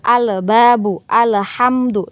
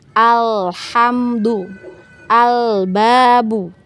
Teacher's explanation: tempo dari huruf lam sukun ini kita panjangkan sedikit ya. Bukan panjang sampai satu harokat, tidak ya.